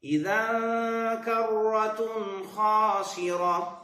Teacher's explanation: اذن کرتن یہاں پر اخفاء غنہ کے ساتھ ہوگا جی ہوگا